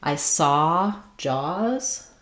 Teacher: So anything that ah is more open, rounded, and happens more in the back. It's similar to the ah, like in father, but a little bit of lip rounding. And the ah, the front of my tongue is down, but the back of my tongue is lifted.